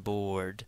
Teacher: It's got a broad, longer sound than comb, hope. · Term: long O